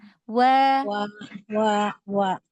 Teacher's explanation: lembutkan lagi huruf wau karena dia punya sifat lin